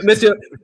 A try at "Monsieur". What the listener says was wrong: Monsieur? Did you really just pronounce that with a hard R? Wait, hold on, Hold on. He just said Monsieur with a hard R. Yes, of